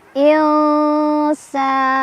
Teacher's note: Jadi pada prinsipnya sekali lagi ikhfa itu ketika kita membunyikan nun atau tanwin maka lidah kita sudah siap-siap ke sin